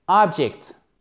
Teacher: Accent tonique aussi sur la première syllabe